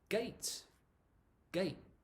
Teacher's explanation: it's almost like we start to say the t sound, but we don't actually say it · For me, it's more natural not to say the t sound.